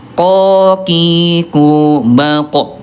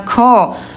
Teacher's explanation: huruf qaf kalau ada udara nanti hurufnya akan tertukar dengan kaf · huruf qaf ayah Bunda dia punya sifat huruf ya dari segi udara namanya jahr. Ya tidak keluar udara.